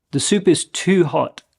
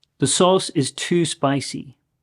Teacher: I would say that this version of too is often stretched a little bit